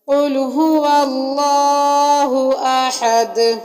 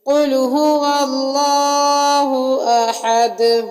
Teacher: وقف کی صورت میں دال پر جزم لگا دیں گے، کیونکہ یہ حروف قلقلہ میں سے دال ہے، تو قلقلہ کریں گے۔ شروع میں قاف کو بھی موٹا پڑھا جائے گا · تجوید کے لحاظ سے لفظ اللہ کے پیچھے والے حرف پر جب زبر آ جائے تو لفظ اللہ کو موٹا پڑھا جاتا ہے، اور آخر میں احد، احد میں دال پر قلقلہ ہوگا۔ وقف کی صورت میں دال پر جزم لگا دیں گے، کیونکہ یہ حروف قلقلہ میں سے دال ہے، تو قلقلہ کریں گے۔